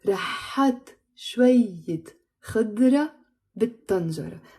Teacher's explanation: we pronounce it بالطنجرة with a liaison, because tanjara starts with the letter ta, which is a sun letter, so we don't pronounce the l sound